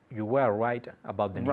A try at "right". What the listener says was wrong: Right. Try and say your R's a bit more Englishy. Right. Look, right. Coge tu labio inferior.